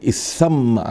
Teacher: تو دیکھیے، تسمع سے اسمع، یہ ہے تو باب تفعل، لیکن اہل زبان تسمع کے بجائے اسمع کہتے ہیں، سین کو مشدد کر لیا